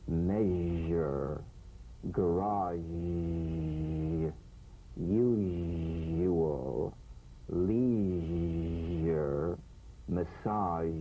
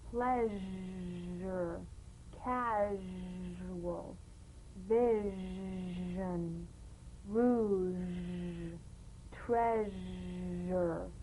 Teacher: All suggestion of the SH must vanish. Feel the SH overridden by the deep rumbling vibrations of the ZH, resonating against the teeth and the tip of the tongue. If you don't feel your teeth vibrating on this sound, you're not making a good Z.